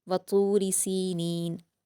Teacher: त पर व मद्दा है दो हरकात खींच कर पढ़ेंगे र पर ज़ेर की हरकतें जल्द पढ़ेंगे और रा को बारीक